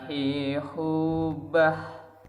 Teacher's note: Jadi jangan ditahan ya, suara ha itu dibiarkan terlepas saja, dilepaskan. Jadi kita itu apa istilahnya, merasa lega seperti minum air es yang dingin.